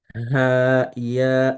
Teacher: make sure you pronounce the name of those letters for 6 counts. You see, I'm pronouncing the name. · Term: mad al-lazim